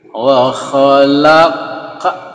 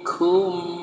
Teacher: Kalau qaf tebal, kalau kaf ini tipis. Kum ka. Jadi masuk.